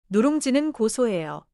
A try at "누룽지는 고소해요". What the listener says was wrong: 고소해요에서 소를 너무 세게 끊지 말고 고소해요로 자연스럽게 이어주세요.